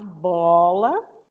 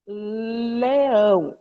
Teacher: A articulação mais contrastiva, um bilabial para um lateral, né? Uma líquida.